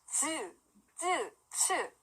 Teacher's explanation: 혀가 완전 입천장 위로 쓱 올라가요. 센 입천장 소리. 혀 끝으로 입천장을 한번 만져보세요.